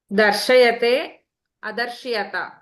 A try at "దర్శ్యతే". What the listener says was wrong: కాదు, దర్శ్యతే అనాలి. దర్శ్య. అక్కడ దర్శయతి 3 అన్ని విడివిడిగా పలుకుతాము. ఇక్కడ ఏంటంటే శకారం కూడా హాఫే పలకాలి, అందుకని దర్శ్యతే.